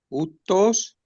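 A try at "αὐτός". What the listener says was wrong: jutos. Pues ahí está el espíritu rudo, ¿ven? Entonces se pronuncia como una J antes. Y la OU, decíamos que la OU suena como U. Entonces aquí tengo que leer jutos, jutos.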